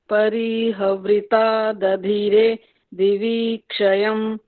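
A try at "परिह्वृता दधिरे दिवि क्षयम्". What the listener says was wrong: हवृता नहीं, ह आधा है ना, परिवृता, ह आधा मुंह में ही रह जाएगा, परिवृता दधिरे दिवि क्षयम।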